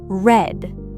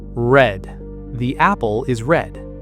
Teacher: Your tongue kind of curls back in your mouth, but it doesn't touch the roof of your mouth. It just floats there. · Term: the American R